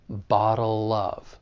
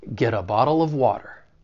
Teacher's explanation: we can link that dark l in bottle with the beginning vowel sound in of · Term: linking